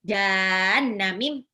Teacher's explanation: nunnya cuma satu harokat loh dia